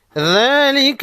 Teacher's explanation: ذالک، ذال پر کرا زبر ہے تو ذال کو 1 الف کے مقدار کھینچ کر پڑھیں گے۔ لام اور کاف پر صرف زبر یا زیر ہے تو فوراً ادا کریں گے۔